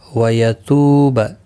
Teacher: واو مدہ ہے، ایک الف کی مقدار کے برابر کھینچ کر پڑھیں گے